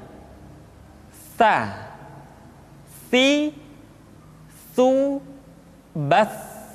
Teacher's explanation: tsa dikeluarkan dengan menyentuhkan ujung lidah kita dengan dinding dua gigi seri bagian atas diucapkan dengan suara dan nafas yang terdengar mengalir tsa SII tu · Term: huruf tsa